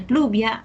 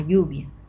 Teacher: Los grupos iniciales, lo que viene a ser aquí, PL, CL, evoluciona a lo que es la doble L.